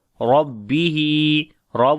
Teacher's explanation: rob we read in heavy sound due to fatha sign on it